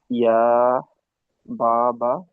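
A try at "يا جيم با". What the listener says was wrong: না, ইয়া জিম বা, এই মাঝখানে জিম রয়েছে দেখুন। হ্যাঁ, কারণ এই যে জিম বলেছেন না।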